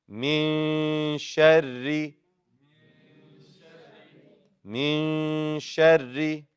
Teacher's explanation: You make both ra's light, both ra's in the shadda light.